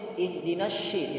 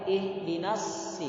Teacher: Jadi huruf shad jangan kita ubah menjadi shin. Ihdinas shi, tidak boleh.